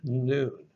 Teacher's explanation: Once again, this is the Greek dental nasal. It's dental, it's formed at the teeth, it forces the air through the nose, the nasal cavity, like N in the word noon.